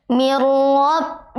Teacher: nun sukun bertemu ro maka membacanya tidak dengung tidak dengung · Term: Idam bila gunah